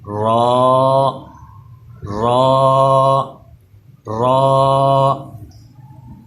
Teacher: را جو ہے اس کے ساتھ ایک الف ہے، اسے تھوڑا لمبا کریں گے